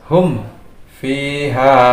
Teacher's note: Ini adalah hukum asyadu idhar atau pengecualian dari hukum idhar syafawi. Jadi manakala ada mim sukun bertemu dengan waw dan fa, maka hukum membacanya harus lebih diidharkan lagi. Nah, di sini ada mim bertemu dengan fa, kemudian mim sukun bertemu dengan waw.